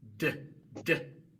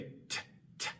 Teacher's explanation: O sea, la lengua se coloca en la misma posición como para pronunciar una T. La única diferencia es que la D es sonora y la T es sorda. Así que la D en inglés es como una T sonora.